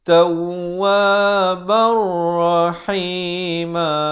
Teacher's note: Di sini idgham bila gunnah. Masuk tanpa dengung.